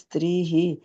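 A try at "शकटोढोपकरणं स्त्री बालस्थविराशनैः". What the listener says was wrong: స్త్రీ దగ్గర విసర్గలు పెట్టకూడదు. స్త్రీ అన్నారు, అక్కడ విసర్గ పెట్ట. శకటోఢోపకరణం స్త్రీ బాలస్థవిరాశనై, లేకపోతే కంప్లీట్ గా స్త్రీ బాలస్థవిరాశనై ఒక పదంగా తీసుకెళ్ళిపోండి. మీరు గుర్తుపెట్టుకోవాలంటే విడతీయాలంటే 8 అక్షరాలు ఉండాలమ్మా. ఇక్కడ శకటోఢోపకరణం దగ్గర చూడండి 8 అక్షరాలు ఉన్నాయి. సో 8 అక్షరాల దగ్గర బ్రేక్ వేయాలి. తర్వాత 8 అక్షరాలు సరిపోయినాయి.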